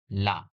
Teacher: पार्श्विक वर्ण में मुख द्वार बीच में बंद हो जाता है और वायु दोनों ओर से निकल जाती है